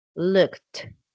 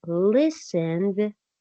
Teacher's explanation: looked the Sounds like a t like really strong looked but listened ends with a d Sound less strong than looked